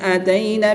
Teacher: یا ساکن سے پہلے حرف پر زبر ہے تو یالین ہوگا, اس کو لمبا نہیں کریں گے بلکہ بغیر لمبا کی نرمی سے ادا کریں گے.